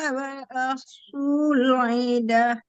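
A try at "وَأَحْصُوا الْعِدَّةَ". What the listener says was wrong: Wa ahsul iddah tasdid lagi dalnya.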